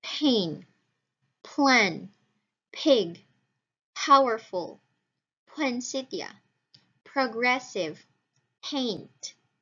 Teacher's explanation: if it is found at the beginning of a word the voiceless bilabial stop occurs as voiceless aspirated bilabial stop